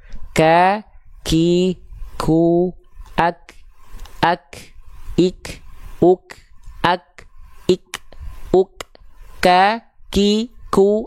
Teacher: Jadi huruf kaf itu dia mengalirkan percikan nafas, pangkal lidahnya disentuhkan ke langit-langit yang pink dan yang kuning, langit-langit yang lunak dan langit-langit yang keras.